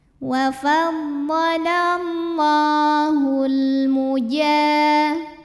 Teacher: Kemudian alif lamnya dinamakan dengan alif lam qamariyah karena alif lam menghadapi huruf qamariyah yaitu mim, maka lam sukun dibunyikan dengan jelas atau disebut dengan izhar qamari.